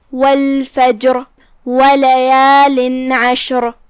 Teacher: حرف العین حروف الاظہار میں سے ہے. تنوین کو ظاہر کریں گے مطلب نون کو ظاہر کریں گے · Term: حکم الاظہار